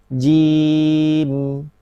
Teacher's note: Kemudian mim sukun yang terakhir dia punya sifat bainiyah.